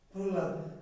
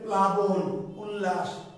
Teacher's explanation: হয়ের উচ্চারণটা বেশি হচ্ছে, লটা হালকা সফট হয়ে যাচ্ছে। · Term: ফলা